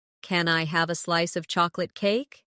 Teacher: Stress chocolate cake, so it sounds delicious and inviting.